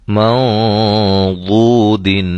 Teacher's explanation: یہاں نون ساکن کے بعد حرف ضاد ہے، اور ضاد حروف مستعلیہ میں سے ہے، موٹے حروف میں سے ہے، لہذا اخفا بھی ہم موٹا کریں گے۔